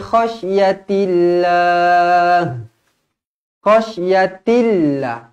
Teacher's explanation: lafzul jalalah dibaca nipis kerana sebelumnya berbaris bawah